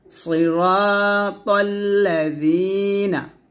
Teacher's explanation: জিহ্বার আগা সামনের উপরের দুই দাঁতের আগার সঙ্গে লাগিয়ে জালটা উচ্চারণ করবেন, নিচে দাঁতে লাগাবেন না। সিরাতাল্লা জিনা, জিনা এটা বলা যাবে না, এটা ভুল, বলতে হবে জি পাতলা করে।